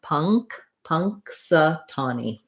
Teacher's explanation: our stress syllable is the ta syllable here. That's going to be longer and have the clear vowel. It's the same vowel as in the word saw, the rounded aw. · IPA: /ŋ/